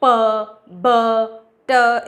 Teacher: पहले ये बंद है तो कंप्लीट क्लोजर है ओरल पैसेज का और फिर सडन रिलीज है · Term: प्लॉसिव